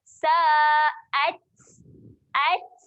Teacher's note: Desik kan? Desik Dia macam ada keluar angin sikit untuk huruf ta tu lah. · Ta mati sifat dia keluarkan angin. Jadi bunyi dia sa'at.